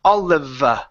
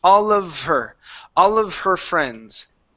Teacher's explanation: there isn't a need to finish the F saying all of.